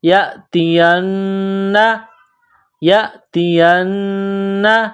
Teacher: نون مشدد ہے تو آواز ناک میں چھپائیں گے